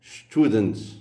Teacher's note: Student est accentué sur la dernière syllabe. Le U inaccentué est donc bref.